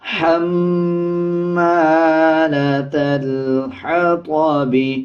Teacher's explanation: میم کے اوپر شد ہے، غنہ کریں گے اور غننے کی آواز ناک سے آئے گی · اسی طرح میم کے اوپر زبر ہے، زبر کے بعد الف ہے، 1 سیکنڈ لمبا کیا جائے گا. تا کو لام کے ساتھ ملا کے پڑھا جائے گا اور لام سے پہلے جو الف ہے اس کو سکپ کر دیں گے